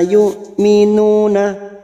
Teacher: yuk hamzah sukun jangan samakan dengan ain, hamzah sifatnya siddah. Fala yu'minuna, nu duma diikuti sukun 2 harokat.